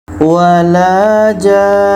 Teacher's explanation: Tanda mad bertemu dengan huruf yang ada tasdid. Ja kita panjangkan enam harakat. Setelah itu dengung nun tasdid dua harakat. Setelah itu matikan nun. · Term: mad lazim kilmi mutsaqqal